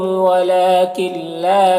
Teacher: ونصحت صاد حروف مستعلیہ میں سے، لکم کے میم میں اظہار شفوی ہو رہا، ولا میں کھڑا زبر ہے، اور یہاں پر نون ساکن کے بعد لام ہے حروف یرملون میں سے تو نون کو لام میں ملا کر بغیر غنہ کے پڑھیں گے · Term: ادغام تام